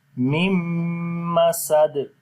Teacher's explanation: the first meme we connect with the second meme directly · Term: idgham with ghunna